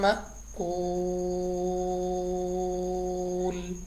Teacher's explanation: مد عارض بن جائے گی وقف کی صورت میں، تو ہم نے لمبا کر کے پڑھنا ہے